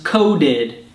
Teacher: But one thing you should remember is that when a verb ends in a T or a D sound already, it has an extra id sound.